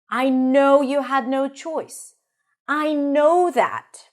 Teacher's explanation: the second time it's repeated, it is usually a little higher on in pitch